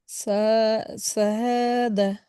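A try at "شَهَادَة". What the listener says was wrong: সা না, এটা কি? শা। শাহাদা।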